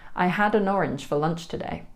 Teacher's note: We don't say an in natural conversation. It's more like un with the schwa e sound.